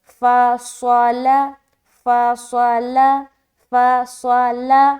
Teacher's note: تینوں کو جلد پڑھ رہے لیکن موٹا اور باریک ادا کریں گے، فا لام باریک اور صاد موٹا۔